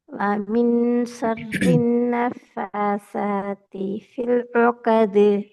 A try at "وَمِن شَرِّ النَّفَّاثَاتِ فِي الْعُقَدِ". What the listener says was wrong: ராகம் அடுங்க. ராகம் ராகம் ராகம் நீங்க நீட்டவனா ராகத்தில் இல்லாம ஆயிட்டீங்க. نفاسات في العقد.